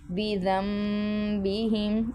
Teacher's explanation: نون ساکین کے بعد اگر با آ جائے تو نون کی آواز کو میم میں مدغم کر کے پڑھیں گے تو یہ غنہ ہوگا اور میم کی آواز آئے گی